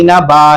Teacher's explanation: 2 زبر کی تنوین پر جب بھی وقف کریں گے کھڑے زبر کی طرح کھینچ کے پڑھیں گے